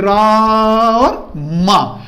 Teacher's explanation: जैसे मैं बोलूं रा और उसके बाद मां देर में बोलूं तो उसके बीच में आ की ध्वनि आ रही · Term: प्लुत स्वर